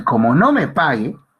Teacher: Aquí el tono es horizontal. O sea, no va ni para arriba ni para abajo.